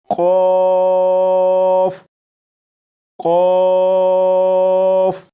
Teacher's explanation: قاف کو جب پڑھنا شروع کریں تو آواز کو موٹا کر لیجیے گا۔ جب آپ زبان کی جڑ کو تالو کے نرم حصے سے لگانے کے بعد قاف کو پر یعنی موٹا پڑھیں گے تو یہ حرف بالکل درست پڑھا جائے گا، جیسے قوف قوف۔